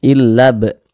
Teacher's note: qalqalah-qalqalah sugro Qalqalah kecil karena dia berada di tengah kalimat atau supaya lebih mudah kita pahami karena dia berada di tengah · Jadi huruf-huruf yang 5 itu kalau dia sukun pantulkan. Nah, ini huruf ba sukun pantulkan. Illa b, mantul seperti itu. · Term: qalqalah sugoro